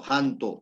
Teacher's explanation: Cuanto más cerca está la la Ja de la vocal u se abre más o sea es pronunciado la o